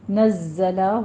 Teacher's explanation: نزلہ زائے کے اوپر تشدید بھی ہے، سیٹی کی آواز لے کر آئیں گے، تھوڑا سا رک کر اس کو ادا کریں گے